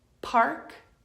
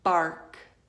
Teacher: that situation you are using your mouth in the same way both lips come together but the only difference is what you're doing in your vocal cords